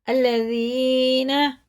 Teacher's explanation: अल्लज़ीना, ज़ाल बारीक होता है, या साकिन से पहले ज़ेर है, खड़े ज़ेर की तरह खींच के पढ़ेंगे